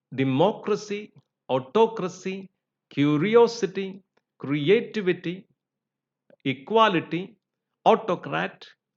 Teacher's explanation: these are stressed on the third syllable from the end